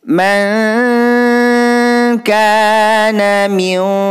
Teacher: Ka di sini hukum bacaan ikhfa hakiki. Cara membacanya bunyi man ini didengungkan 2 harokah